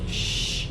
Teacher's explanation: Nah, karena dia makhrajnya sama, ya, maka sama, ya, di lidah bagian tengah dengan, cuma kalau ja tadi menempel, kalau sya ya nggak sampai menempel gitu, ya, cuma sama sejajar. Lidah bagian tengahnya sejajar dengan langit-langit atas. Dia nggak sampai nempel, cuma naik. Lidah tengahnya naik, ya, dan ada aliran angin, nah gitu, ya.